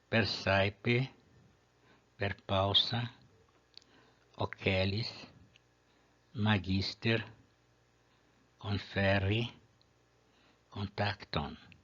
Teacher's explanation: Em todas essas palavras, a penúltima sílaba é longa, portanto o acento fica na penúltima sílaba.